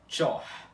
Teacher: Em vez de você pronunciar o T, o I e o O com acento, tudo junto nessa palavra, como tchor, você só vai pronunciar o T da letra tché como um T chiado, com um sonzinho de tch, e logo imediatamente você vai ter que pronunciar o O aspirado, sem o I antes dele